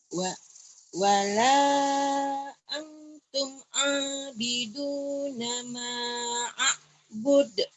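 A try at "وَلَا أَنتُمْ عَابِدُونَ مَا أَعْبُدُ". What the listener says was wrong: Wala. Jangan pakai lagu dulu ya. Puasa lagu dulu deh. Karena kalau lagu membuat ngengkreng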